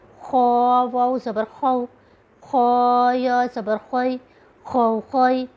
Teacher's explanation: یہ حروف مستعلیہ میں سے ہے، یہ پر اور تھوڑی رگڑ کے ساتھ گلے سے محسوس ہوگا